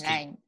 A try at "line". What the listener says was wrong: Line. Nope, you're saying nine because you're blocking it. You're saying nine. If you were to close the sound from and prevent it from coming through your nose, you would feel that you're making that sound through your nose, right? That's a nine.